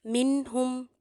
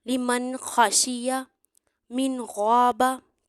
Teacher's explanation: नून की आवाज वाजिया निकलेगी इसके मखर पर जाएंगे यानी कि जुबान की नोक मसूड़ों पर लगेगी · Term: इजहार